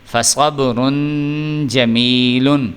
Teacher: غنہ کر رہے ہیں چونکہ اگلے والا جو ہے یہ حروف حلقی میں سے نہیں ہے